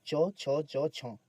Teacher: च छ ज झ ये सभी तालव्य व्यंजन इनका उच्चारण तालू से होता है